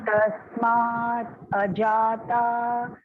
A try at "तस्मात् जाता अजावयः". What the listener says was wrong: No, no. Please listen to it properly. Tasmaat jata. Don't break it. In the same breath.